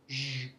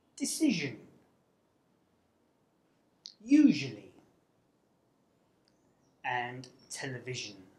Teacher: it is Voiced which means that you vibrate your vocal chords to make the sound · you create friction through clenched teeth by directing air flow through a narrow channel formed along the middle of the tongue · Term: Voiced palato-alveolar sibilant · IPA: /ʒ/